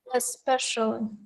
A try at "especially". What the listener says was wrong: the word stress was a little bit awkward especially that's how we we say it